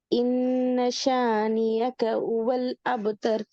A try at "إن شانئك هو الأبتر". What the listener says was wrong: பிள்ளை இன்னஷானி அக்க. அப்ப இதுல யா சவுண்ட் தான் வருது, ஏட உச்சரிப்பு வருது. இல்ல ரெண்டாவது அடுத்த மிஸ்டேக் பாத்தீங்களா? இன்னஷானி அக்க யக்கன்னு தான் வருது. எஸ், அக்க சவுண்ட் வரணும்.